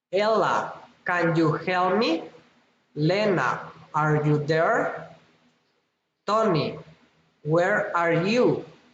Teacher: Direct address rising intonation